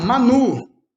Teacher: Quando a gente for falar Manu, a sílaba tônica é o nu, então não tem acento no U.